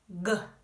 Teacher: You make this sound by touching your tongue to the back of your mouth and making a sound in your vocal cords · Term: g sound